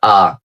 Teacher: এটা ব্রিটিশরা উচ্চারণ করে আ শেষের রটা উচ্চারণ করে না